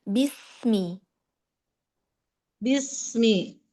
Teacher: rahangnya benar-benar turun ya saat dia ee melafazkan kasrah